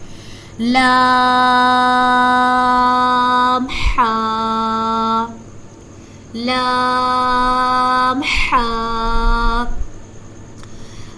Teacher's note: اب حا کا ہم نے مخرج پڑھا تھا کہ حا حلق کے درمیان والے حصہ سے ادا ہوتا ہے، حا۔ تو اب لام جو ہے اس کو 5 الف کے برابر لمبا کریں گے، حا کو 1 الف کے برابر لمبا کریں گے